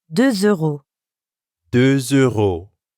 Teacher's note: De is actually spelled with a silent letter X at the end. But when we add a vowel sound after it, like in euro, we end up with a liaison that has a Z sound